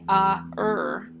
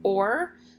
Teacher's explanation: or is actually it's called a murmur diphthong or an r controlled vowel so these blend together to make one sound or it doesn't say ah er it says or so in